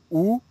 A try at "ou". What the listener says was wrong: One more time, a little bit lower. Ou. Wait, it's almost just like when we want to surprise someone, we say boo. It's the same sound as boo.